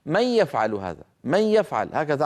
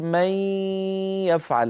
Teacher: هذا المط للغنة مصاحبا لصوت الياء هو من خصائص النص القرآني